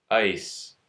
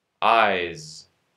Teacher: S and z are both alveolar fricative consonants. S is unvoiced, z is voiced.